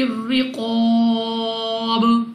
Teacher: با قلقلہ مشدد ہے تو خوب جماؤ کے ساتھ ادا ہوگا۔ قاف مستعلیہ میں سے ہے، موٹا پڑھیں گے، منہ آواز کو کھول کر۔